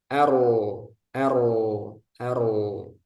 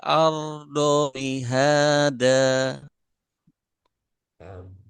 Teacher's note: jadi pangkal lidahnya ikut naik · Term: tebal